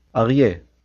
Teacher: The a sound comes from the throat.